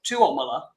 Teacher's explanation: So in Finland, they stress the second syllable.